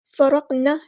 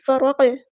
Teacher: قاف ساکن آ گیا تو یہاں پہ قلقلہ کریں گے، ہلائیں گے۔ فرقنا نہیں پڑھنا، فرق، اور نا الف مد آ گیا تو مد اصلی کریں گے۔